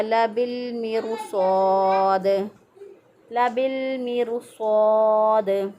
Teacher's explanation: स्वाद जो है चूँकि मोटा हरफ है, मोटे हरफ की वजह से रा को भी मोटा पढ़ लिया जाएगा, चाहे उससे पहले वाले हरफ के नीचे ज़ेर है फिर भी रा को मोटा पढ़ा जाएगा क्योंकि स्वाद मोटा है इस वजह से।